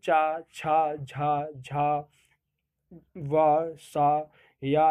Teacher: तालव्य व्यंजन जो तालु से बोले जाते हैं